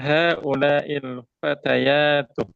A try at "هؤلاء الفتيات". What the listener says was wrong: Fatayatu. Di sini di kita mana Fityatu? Fatayatu ada alif fatayat.